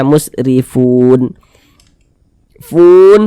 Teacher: huruf ro memiliki harakat kasrah dibaca tipis